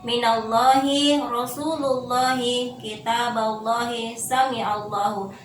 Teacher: lam tafkhim mufakhama yang berarti tebal